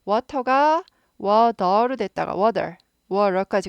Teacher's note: 워터가 워더로 됐다가 워러까지 가잖아요. t가 드로 갔다가 르까지 갑니다.